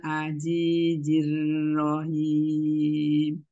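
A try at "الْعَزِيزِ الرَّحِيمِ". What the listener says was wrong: Masih kedengaran huruf J Umi, Pak. Hurufnya Zai. Aziz. Zi. Ya, apa nanti jadi PR ya huruf Z-nya ya, insyaallah.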